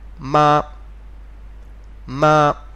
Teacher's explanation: all that matters is that the tone is flat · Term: first tone